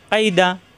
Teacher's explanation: দালের মাকড়া জিব্বার আগা উপরে দুই দাঁতের গোড়ায় লাগিয়ে।